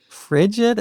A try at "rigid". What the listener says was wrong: No, rigid, not frigid. Rigid.